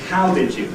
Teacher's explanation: The first foot is how did you? We've got 2 unstressed syllables following the rhythmically stressed syllable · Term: rhythmic stress